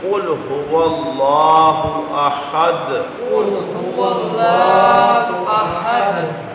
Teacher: ہا حلق کے وسط سے ہے